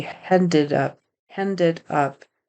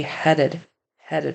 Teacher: he adds an n in there um in front of the D